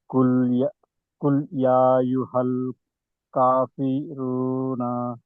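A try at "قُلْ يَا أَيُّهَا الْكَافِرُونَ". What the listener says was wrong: ఇక్కడ మీరు మద్దల్ వాజిబ్ ముత్తసిల్ చేయలేదు. ఇక్కడ యా 4-5 హర్కతులు తప్పనిసరిగా దీర్ఘం తీయాలి. నూన్కేమో సుకూన్ చేసి ఆపాలి. మద్ద ఆరిదిల్ సుకూన్లో నియమం ఏమిటి? చివరి అక్షరానికి సుకూన్ చేయాలి.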